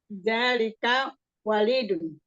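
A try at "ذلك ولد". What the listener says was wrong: Waladun. Kalau walid, kalau lamnya kasrah itu orang tua, ya. Kalau waladun lamnya fathah itu artinya anak laki-laki.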